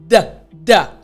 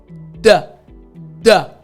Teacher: So you're touching the tip of your tongue to the roof of your mouth but you also need to remember that there's a sound, a vibration that comes from your throat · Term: D sound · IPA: /d/